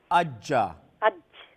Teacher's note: جیم وسطے زبان وسطے تالو کے درمیان والا حصہ